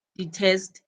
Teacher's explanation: the word detest takes the stress, but only the last part, which is test.